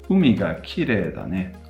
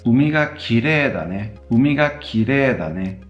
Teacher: They both start off high and drop immediately after that first mora. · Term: atamadaka